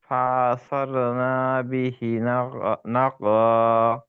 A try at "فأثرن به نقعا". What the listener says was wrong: নাতে টান হবে না। فأثرن به نقعا।